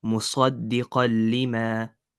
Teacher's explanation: So we don't do ghunna, and instead we skip the noon sound completely.